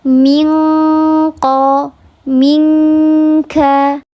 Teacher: Kalau ikhfa hakiki yang ab'ad karena dia letak huruf qaf dan kaf ini letaknya di pangkal lidah dekat dengan khayshum, bunyikan nun sukun di huruf qaf dan huruf kaf sehingga dia pasti bacaannya eng karena terhalang.